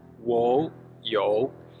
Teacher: I have in Chinese is say wo you, so it's two falling and rising